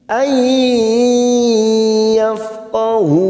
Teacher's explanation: nun sukun bertemu ya idgham bi gunnah kita tekan 3 ketuk